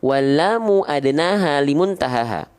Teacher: Lam itu dilafalkan, ya teman-teman sekalian, dari tepi lidah kita yang kiri dan yang kanan, ya, menyusur sampai ke ujung lidah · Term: huruf lam